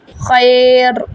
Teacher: را پہ موٹا کریں گے اس کو ہم